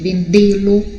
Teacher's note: No caso de vendê-lo, vai ser um circunflexo, por quê? Porque é um som mais fechado